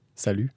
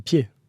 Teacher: You don't pronounce the T at the end in French.